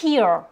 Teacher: on prononce bien le H et là on a un long I